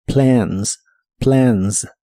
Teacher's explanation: La A de esta palabra se pronuncia con un sonido de inglés que es una combinación entre el sonido E y el sonido A.